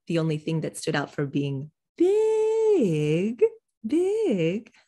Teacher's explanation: hear me emphasize big that's contrast because it's contrast with small contrast goes way up and back down with a little hook